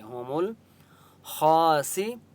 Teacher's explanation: خا مستعلیہ میں سے اس لیے خا کو موٹا پڑھیں گے